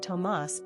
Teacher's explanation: The main difference between Thomas and Tomás is where the accented syllable resides. Tomás has the accent on the last syllable, leaving us with a more energetic and upbeat ending.